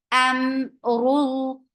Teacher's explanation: Ra is heavy for dhamma, circle your lips